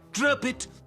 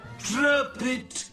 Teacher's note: the letter P from drop simply links to the next word which started with a vowel it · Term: connected speech